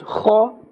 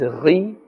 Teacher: Kha and ghain, both these letters are from the top part of the throat, but you can hear the difference. And one has a scraping sound and the other doesn't.